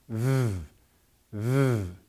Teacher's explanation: top of your teeth on the bottom lip, v, and you vibrate as you're blowing air out